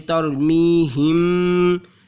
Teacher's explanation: अब यहाँ पे मीम साकिन है, मीम के ऊपर जज़्म है, इसके बाद यहाँ पर देखिए ये बा है, तो यहाँ पर हमें तरमीहिम में ये मीम में गुन्ना करना है, चूँकि यहाँ पे इख्फ़ाए शफ़ी का कायदा हो रहा है ना, मीम साकिन के बाद हरफ़े बा है तो गुन्ना करेंगे